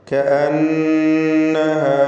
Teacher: കഅന്നഹ, നൂൻ മുശദ്ദദയെ മണിക്കണം.